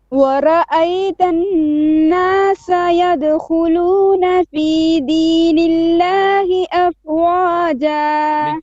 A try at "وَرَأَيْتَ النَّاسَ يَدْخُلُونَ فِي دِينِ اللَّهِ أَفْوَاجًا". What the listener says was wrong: Make your fa more clear. Afwaja.